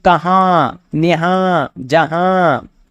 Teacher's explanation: نون غنہ کی پہچان یہ ہے کہ اس کی آواز ناک سے نکلتی ہے۔ دوسرا، جب یہ لفظ کے آخر میں آتا ہے تو اس پہ نقطہ نہیں ہوتا۔